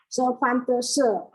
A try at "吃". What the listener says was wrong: Bukan shi. 吃饭的吃. 吃ya, Bu ya, bunyinya 吃.